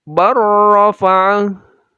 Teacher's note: Barrafa awalnya bal lam sukun lalu bertemu ro, lam menghilang dan langsung bertemu ro untuk menjadi bar. Jadi seolah-olah ro langsung tasydid.